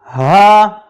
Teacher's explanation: ہا حلق کے آخری حصہ سے ادا ہوتا ہے جو سینے کی طرف ہے